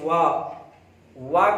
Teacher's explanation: वा कहने पर उसका उच्चारण स्थान दंतोष्ठ होता है, यानी दंत और ओठ से दोनों से बोला जाता है